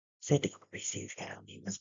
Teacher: Bunyi yang dihasilkan berbisik. Bila kita berbisik, rupa-rupanya pita suara kita ni tengah kita sempitkan.